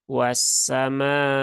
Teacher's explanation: mimnya ada alif ya, alif setelah fathah bertemu dengan hamzah. Bertemu dengan hamzah, maka mimnya dipanjangkan 4 harokat ya, mad wajib muttasil ya, boleh dibaca 4 atau 5 harokat.